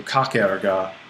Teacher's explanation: battle before another vowel this is going to trigger illusion so we drop that final vowel